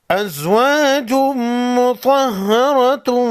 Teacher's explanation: وَأَزْوَاجٌ مُطَهَّرَةٌ، तनवीन के बाद मीम है, मीम हुरूफ यरमलून में से है, इदगाम मअ गुन्ना होगा।